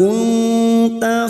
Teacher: nun sukun bertemu ta ikfa hakiki, kita dengungkan selama 2 atau 3 harokat.